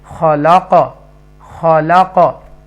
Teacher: तो यहाँ पर देखिए क़ाफ कसरा तैन के साथ है, यानी कि क़ाफ 2 ज़ेर किन 2 ज़ेरों के साथ है, लेकिन जब हम वक्फ करेंगे तो वक्फ की सूरत में लास्ट लेटर चेंज्ड इनटू साकिना। तो यहाँ पर जब क़ाफ साकिना हो जाएगा तो हरूफ कलकला बन जाएगा, तो हम इसको इको साउंड के साथ पढ़ेंगे